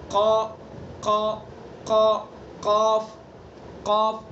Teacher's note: قاف زبان کی جڑ. جڑ کہاں لگائیں گے؟ اوپر کے تالو پر، بالکل اس کے مقابل اوپر کے تالو پر.